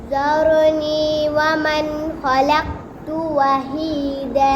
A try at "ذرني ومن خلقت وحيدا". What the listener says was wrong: एक तो आपने जार कलकला नहीं करना रहा जार और दूसरा खलक़त इसमें करना है ذرني ومن خلقت وحيدا